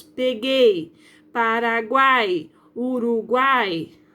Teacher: são três vogais e elas não se separam na hora da pronúncia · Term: tritongo